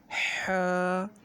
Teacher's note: ہا کو حلق سے نکالنا ہے، حلق سے، درمیان حلق سے ح نکالیں۔